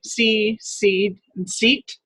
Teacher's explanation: But if I try not to say them so carefully and I just say them relaxed normally, see, seed, and seat, you'll notice even though they all involve the same vowel, the same, as we learned before, high front, tense, it's also a long vowel of English